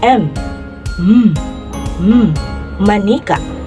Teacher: ang paraan ng artikulasyon ng letrang ito ay pailong at may tunog at ang punto ng artikulasyon ng letrang ito ay panlabi